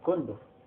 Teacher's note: Cóndor lo acentuamos en la penúltima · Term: palabra grave